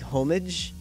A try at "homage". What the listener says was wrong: The H is silent.